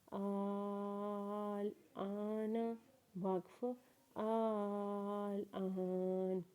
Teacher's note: اس word میں پہلے والے حمزہ کو 5 الف کے برابر کھینچیں گے کیونکہ اس کے اوپر بڑی مد ہے، اور دوسرے والے حمزہ کو 1 الف کے برابر کھینچیں گے کیونکہ اس کے اوپر کھڑا زبر ہے۔